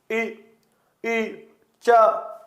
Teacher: इनके उच्चारण में जीवा तालु की ओर जाती है, इसलिए इनको तालव्य वर्ण कहते हैं